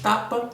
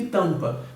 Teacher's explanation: Perceba que eu destaco 2 sons, um em cada palavra, que vão diferir entre si por conta da nasalidade, certo? Nós temos um som oral aberto em tapa e temos um som, um segmento vocálico fechado, nasal em tampa. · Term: fonemas vocálicos